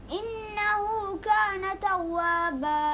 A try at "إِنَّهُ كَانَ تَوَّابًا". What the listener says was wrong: فهم ولا ما شاء الله but you done a mistake. إنه إن نون مشدد is غنا isn't it واجب غنا.